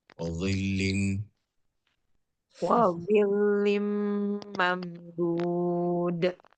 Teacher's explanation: Izhar syafawi. Mati ketemu dal. Izhar syafawi, nggak boleh dengung.